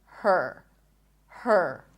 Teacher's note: So you actually don't hear the vowel letter here. You transition from the H to the R directly. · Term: stir sound